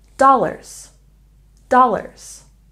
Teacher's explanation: we put stress on the first syllable in dollars